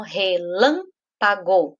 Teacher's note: O lã é a antepenúltima, então ele é a sílaba mais forte